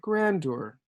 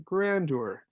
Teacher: The blue line shows kind of the contour of the frequency of the call or of the speech, where here my voice raised when I said grandeur